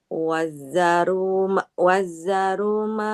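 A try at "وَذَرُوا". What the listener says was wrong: Nggak wazaru. Zalnya Zalnya bertasydid tidak? Enggak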